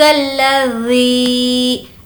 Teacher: ذی کو کھینچ کر پڑھیں گے کیونکہ یہاں پر یا مدہ کا قاعدہ ہو رہا ہے اور ذال کو سافٹ رکھیں گے۔